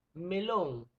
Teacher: Lon sería la sílaba más fuerte, que sería la sílaba tónica.